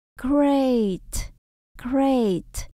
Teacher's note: Ở đây là nguyên âm đôi các bạn nhé, mình đọc hơi dài.